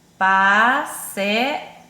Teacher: Porque a vogal E e a vogal A ficaram em sílabas separadas, né? Quando isso acontece, nós classificamos a palavra como hiato.